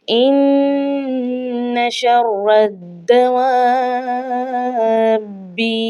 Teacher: یہ مدہ لازم ہے، یعنی کہ یہ لازم مدہ ہے، اور اس کو ہم نے 4 یا 5 الف کی مقدار کھینچ کر پڑھنا ہے · دال کو پچھلے لفظ را کے ساتھ بھی ملانا ہے، اور پھر اپنی حرکت کے ساتھ بھی ہم نے پڑھنا ہے۔ تو یہ جو خالی الف ہے اور یہ جو لام ہے اس کو ہم نے نہیں پڑھنا۔